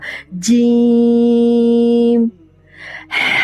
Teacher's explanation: زبان کا درمیانی حصہ اوپر تالو کے ساتھ لگے